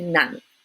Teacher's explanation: dấu nặng words tend to be very short when you pronounce them